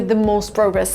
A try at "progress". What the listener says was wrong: In America, we use the open a sound like hot and stop. Progress. We don't use the long o like no and go.